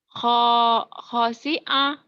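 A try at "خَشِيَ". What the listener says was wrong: Nggak ada yang panjang ya. Khosya.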